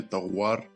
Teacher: Если после согласного звука идет буква В, то это лабиал. В слове товар я сказал как-то окончание товар, не ор, а уар.